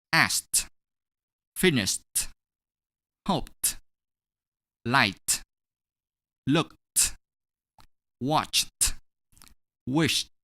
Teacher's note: we’re gonna pronounce -ed as [T] for the following verbs